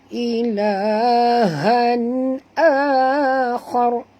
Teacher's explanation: Dia bertemu dengan hamzah, tak boleh dengung, izhar halqi. Ilahan akhar, a di sini mak badal, dua harakat, dan kita berhenti di sini tebalkan pada ra.